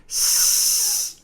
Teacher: There is no vibrations happening in your throat here because this is unvoiced.